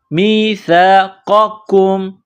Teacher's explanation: قاف نقطوں والا قاف ہے، اس کو موٹا کرنا ہے، قاف زبر قا، میثاق. یہ بغیر نقطوں والا کاف ہے، اس کو باریک کرنا ہے، کاف کو میم کے ساتھ ملانا ہے، کاف میم پیش کم، میثاقکم.